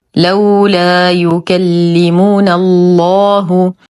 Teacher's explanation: مغلظ اللام في اسم الجلاله جل في علاه لانها سبقت بالنون المفتوحه · الف ساكنه ما قبلها مفتوح لكن تلقى بعدها اللام المشدده اذا تحذف الالف لفظا لا رسما منعا من التقاء الساكنين